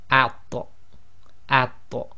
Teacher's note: with the sakin, this will behave as a qalqala letter, i.e. its echo as well